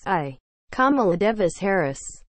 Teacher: sotomayor put the emphasis on the second syllable of kamala rather than on the first